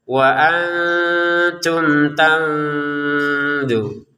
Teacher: kalau mim sukun bertemu ta barulah dibaca dengan jelas